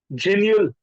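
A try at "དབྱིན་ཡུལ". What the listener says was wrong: जिन, हाँ देखिए अभी आपने जिन्यूल पढ़ा ना सर, बट मैंने एक बार बीच में इंस्ट्रक्शन दिया था, अगर हमारे पास इससे पहले द पोस्टस्क्रिप्ट है तो इसका उच्चारण या हो जाएगा। यिनयुल है ना।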